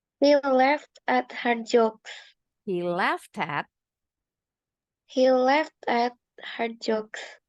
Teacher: bunyi t-nya nih ed-nya disambung ke bunyi at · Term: linking